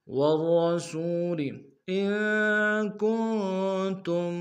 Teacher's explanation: ان میں نون ساکن غنہ کریں گے، کن میں بھی نون ساکن غنہ کریں گے